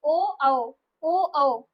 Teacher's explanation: ओष्ठ जो है हमारे वो भी हमारे गोल हो रहे हैं और कंठ से भी साउंड आ रहा है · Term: कंठोष्ठ